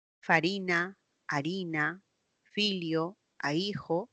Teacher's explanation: la f inicial latina se dejó de pronunciar y se cambió por una H